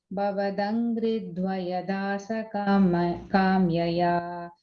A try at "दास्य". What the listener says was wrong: second time when you said Dasakamya, Dasya. First time you said correct, okay.